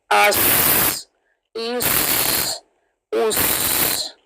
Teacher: پھر سود ہے، سیٹی بھی آئے گی سود میں اور ہیوینس بھی آئے گی